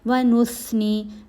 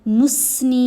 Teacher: سا کی آواز کو نرمی سے ادا کیا جائے گا، آپ کی زبان دانتوں کے درمیان میں آنی چاہیے۔ وَنُثْنِي، نُسْنی نہیں پڑھنا، وہ سین کی آواز ہے۔